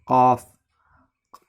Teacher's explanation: قاف کا مخرج ہے اعلیٰ اقصائے لسان اور اس کے مقابل اوپر کے تالو